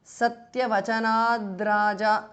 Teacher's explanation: Satyavachanat is a compound word. The th in the end changes to d because of sandhi.